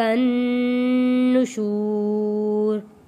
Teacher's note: نون تشدید پہ غنہ ادا کیا ہے